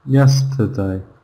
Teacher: ER in this word, not stressed, it's the schwa sound.